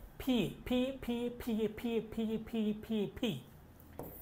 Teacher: এটা হচ্ছে ফি, 2 ঠোঁট দিয়ে উচ্চারণ